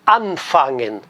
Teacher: Olha o verbo anfangen, tem uma regra, a regra é a seguinte, esse prefixo an é um prefixo que se junta ao fangen, esse an, ele diz a regra que é sempre tônico. Então todas as palavras, todos os verbos começados pelo prefixo an, a sílaba tônica está no an